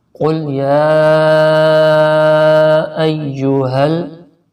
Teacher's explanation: یا کو کھینچ کے پڑھیں کیونکہ کھڑی زبر بھی ہے اور اس پر مد بھی ہے، تقریباً 5 انگلیوں کے برابر، یعنی کہ جتنی دیر ہمارے ہاتھ کی 5 انگلیوں کو کھولنے میں لگتی ہے تقریباً اتنی دیر یا کو کھینچ کے رکھنا ہے۔